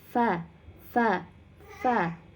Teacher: tempat keluar hurufnya terbentuk dari ujung gigi seri atas bertemu dengan bibir bawah bagian dalam